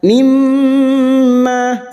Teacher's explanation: mim yang bertasdid gunnah musyaddadah kita dengungkan selama 3 harokat